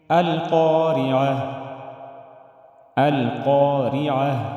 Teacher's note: را کے نیچے زیر ہے تو اس کو ہم باریک ادا کریں گے